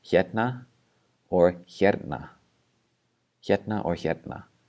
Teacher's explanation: the R being replaced by a T or the T being inserted between the R and the N. So we have this first word, it can either be pronounced hérna or hérna, hérna or hérna.